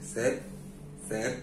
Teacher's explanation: ク喉で止める、こんな感じの発音に変わっちゃいます。その次はちょっとこれ難しいんですけれども、セーブブブブブ、ちょっと舌噛むってことはやっぱり唇で止めるに近いですよね。発音がタイ語にない場合っていうのは、これまあ日本語も一緒なんですけれども近い音に変わらざるを得ないですから、ですからこれは 唇を思い切り閉じてセーブこんな感じになりますね